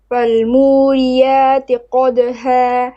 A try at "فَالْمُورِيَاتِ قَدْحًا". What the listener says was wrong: Fal mu ri ra kasra light and flat. Okay, you're saying muri ra tui to no. Muri ra ti fat. Flat. Okay, listen, you're making your ta heavy. You're saying muri ra ra tu. Fal muri ra ti flat. Muri ra ti.